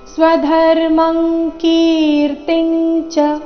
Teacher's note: ಇಲ್ಲಿ ಅನುಸ್ವಾರದ ಉಚ್ಚಾರಣೆ ಕ ವರ್ಗದ ಅನುನಾಸಿಕದ ರೀತಿ ಸ್ವಧರ್ಮಂ ಕೀರ್ತಿಂಚ ಕಿ ದೀರ್ಘ ಕೀರ್ತಿಂಚ ಕೀರ್ತಿ ನಂತರ ಬಂದ ಅನುಸ್ವಾರದ ಉಚ್ಚಾರಣೆ ಚ